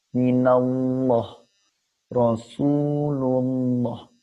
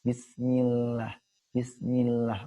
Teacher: Ujung lidah itu menyentuh pangkal gigi atas. Gigi atas. Tapi sedikit saja menyentuhnya agar dapat tipisnya. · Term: tarkik atau tipis